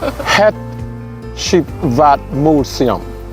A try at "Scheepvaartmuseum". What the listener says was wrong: Yeah, it's very funny to me because it's Scheepvaartmuseum, but you say Sheepvaartmuseum.